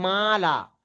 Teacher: মালা, যে মিমের পরে যে আলিফটা আছে সেই আলিফের আগে অর্থাৎ মিমটা হলো বারিক অক্ষর। আলিফের পূর্বে বারিক অক্ষর আছে, সেই জন্য আলিফটাও বারিক পড়তে হবে। সেই জন্য এরকম পড়তে হবে মালা।